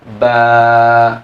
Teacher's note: Contoh kalau misalnya kita baca huruf ba fathah, ya, ba fathah pendek itu. Dikasih alif, maka ba-nya menjadi panjang.